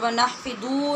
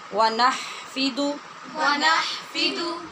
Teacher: نحفدو کے اوپر پیش ہے، اس کو لمبا نہیں کرنا